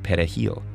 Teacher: Dominicans pronounce it perejil, with a trilled Spanish R.